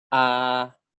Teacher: This is the glottal stop or ang, correct? Or ang, followed by Sara A.